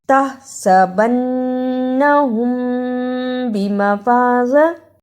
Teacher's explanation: أَن يُحْمَدُوا تَحْسَبَنَّهُمْ بِمَفَازَةٍ اخفاء شفوی۔ ادا کرنے کا طریقہ میم ساکن کی آواز کو تھوڑی دیر ناک میں چھپا کر غنہ کرنا ہے۔